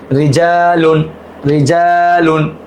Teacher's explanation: র এর নিচে জের এবং র সাকিন তার ডানে জের হলে জেরকে পাতলা করে পড়তে হয় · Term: পাতলা করে পড়ার